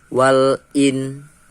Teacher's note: cara membacanya samar dengan dengung dan ditahan selama 3 harokat pada waktu mengucapkan huruf nun sukun. Sikap lidah dan bibir dipersiapkan menempati huruf sin. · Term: ikhfa